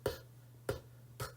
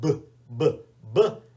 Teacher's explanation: With P, P, P, it's just the air. But with B, B, B, you get your vocal cords going. You should be able to feel it.